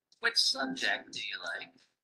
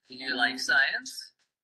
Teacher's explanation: Which subject do you like? Starts higher and falls at the end. Do you like science? Starts lower and rises at the end.